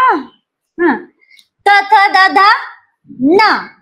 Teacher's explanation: जिभेचा शेंडा दाताच्या माग लावायचा